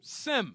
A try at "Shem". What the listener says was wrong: See, that's Sem there. Because in Greek, the letter S is pronounced with a sh sound, as in shut up, or shoot, or shy. So when we read Sem in English, it's not really pronounced Sem, it's pronounced Shem. With an S, in Greek, it's a SH sound in Greek.